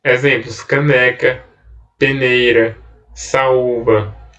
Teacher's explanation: oxítonas paroxítonas é a penúltima sílaba é a tônica ou seja a sílaba tônica é a penúltima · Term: palavras paroxítonas